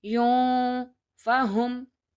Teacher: I have to hold the sound of ikhfa in my nose by saying yun, fahum.